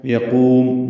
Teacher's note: قاف کو پر پڑھنا ہے، لمبا کرنا ہے